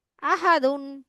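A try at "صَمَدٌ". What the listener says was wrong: না না ওটা মিম আপু একটা গোল আছে না একটা গোল হলে মিম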